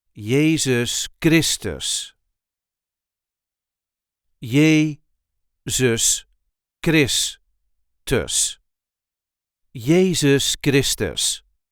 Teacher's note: There is a light emphasis on the second syllable of his second name.